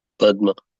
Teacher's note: quicker Padma because of the conjunct consonant because of the satsang this a was pronounced for a longer period of time along with the following consonant